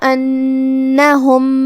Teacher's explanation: نون پہ تشدید ہے تو 2 حرف کے برابر نون کو پڑھنا ہے۔